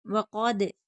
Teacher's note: لکم وقد، قاف حرف مستعلیہ پر پڑھیں گے، دال حرف قلقلہ ہے، قلقلہ ہوگا